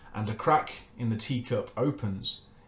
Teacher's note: is technically two anapestics followed by an iambic and then followed again by a weak feminine ending as an open unstressed syllable